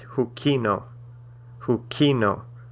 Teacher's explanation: the emphasis is on the second to last syllable